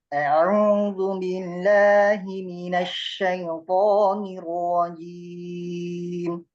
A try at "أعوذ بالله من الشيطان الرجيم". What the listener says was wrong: كرر المرة الثانية لأن الصوت عندك كان ضعيف في بعض الحروف. أعوذ بالله. شوف تحكم في الفم. لا أنت تتحكم أنت في الفم، لا الفم لا يتحكم فيك. في بعض وأنت تقرأ في بعض الحروف ما زلت لم تبدأ في الحرف والشفتين تسبق الحرف، فأنت تتحكم أنت في الفم. صفة الحرف، شكل الفم مناسب لصفة الحرف مع الحرف، ليس بعد الحرف ولا قبل الحرف.